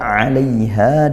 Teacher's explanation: di situ ada fathah diikuti sukun lin dilembutkan suaranya ha mad th'i panjangnya satu satu alif.